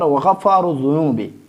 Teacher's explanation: اس دونوں را کو ہم موٹا پڑھیں گے کیونکہ اس پہ پیش آیا ہے